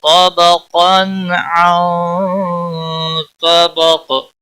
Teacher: اور قاف دونوں حروف مستعلیہ میں سے پر پڑھے جائیں گے تنوین کے بعد حلقی حرف آیا ہے یہاں پر اظہار ہوگا اس اظہار کو اظہار حلقی کہتے ہیں طبقاً نون ساکن کے بعد حروف اخفا آیا اخفا حقیقی ہوگا